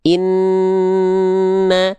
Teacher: setelah n-nya nempel suaranya dia masuk ke hidung dulu dia inna baru keluar vokal A-nya atau vokal harakatnya. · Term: dengung